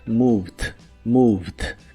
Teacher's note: Es muy similar a la forma del presente, solo que en el pasado se le agrega la terminación ed, aunque solo se pronuncia la d